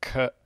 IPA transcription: kə